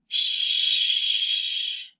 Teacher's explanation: your throat does not vibrate when you say this sound because it is an unvoiced sound